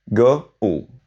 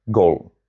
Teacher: Goal in English is secretly two vowels smuggled into one word. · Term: diphthong